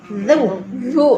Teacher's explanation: Nah, iya, itu huruf za di situ. Ujung lidah bertemu ujung gigi seri atas.